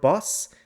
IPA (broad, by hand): bɐs